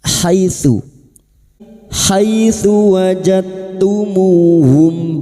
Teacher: Kina haitsu. Hai fathah bertemu ya sukun kita lunakkan huruf lin.